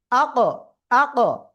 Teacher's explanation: কফ কোন জায়গা থেকে উচ্চারিত হয়, এই যে জিহ্বার গোড়া তার বরাবর উপরে তালুর সাথে লাগে উচ্চারণ হয়। তো ওই জায়গাতে জাস্ট এরকম লেগে আসায়, এরকম হঠাৎ করে লাগার পরে শক্ত করে লাগলেই একটা অতিরিক্ত আওয়াজ হচ্ছে, সেটাই কলকলা।